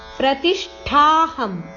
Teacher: ಇಲ್ಲಿ ಶ ಷಟ್ಕೋನಶ ಮತ್ತು ಠ ಮಹಾಪ್ರಾಣ